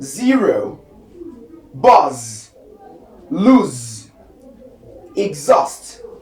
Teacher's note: So the next one we have is z. So a voice alveolar fricative